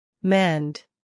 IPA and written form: mɛnd (mend)